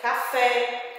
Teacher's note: a sílaba recebe um som aberto que indica a sílaba tônica